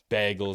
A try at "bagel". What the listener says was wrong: You say bagel or bagel? You say it like Baygl. Bagel. Yeah, you say it like a bagel.